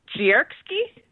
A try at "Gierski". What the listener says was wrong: It's, you have to sound the G as a J, so it's Yeski.